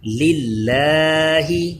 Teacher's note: یہ اللہ کے لام سے پہلے لام کے نیچے زیر آ گیا ہے اس لیے اس کو باریک پڑھیں گے. للہ لام باریک ہے یعنی اس کو للہ ایسے نہیں پڑھنا بلکہ للہ.